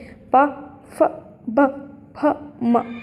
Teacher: प फ ब फ म ये ओठ से बोले जाने वाले हैं।